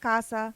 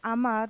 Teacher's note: the letter a is pronounced like the a in Father it is an open Sound